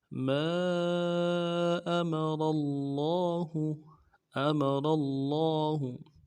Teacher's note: لفظ اللہ کے لام کے اوپر تشدید بھی ہے، زور دیں گے ، کھڑا زبر ہے، ایک الف دال میں کھینچیں گے اور · حمزہ کو نرم سے پڑھیں گے، میم کو بھی نرم سے ادا کریں گے، را کو موٹا کریں گے ، را کے زبر کو آگے لفظ اللہ کے لام کے